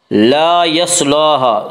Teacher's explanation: صاد کو پر پڑھیں گے، صاد حروف مستعلیہ میں سے ہے